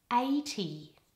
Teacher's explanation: In the word 80, the stress is all on the first syllable, and there's a double vowel in there too.